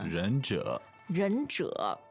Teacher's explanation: It's a little difficult because it's two third tones.